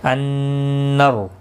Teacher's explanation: نون مشدد پر غنہ ہوگا اور را زبر کی وجہ سے پر پڑھا جائے گا